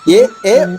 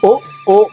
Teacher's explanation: ఏ అన్నప్పుడు పెదవులు కదలక్కర్లేదు, కానీ ఓ అన్నప్పుడు మాత్రం పెదవులు సున్నాలో మారుతున్నాయి.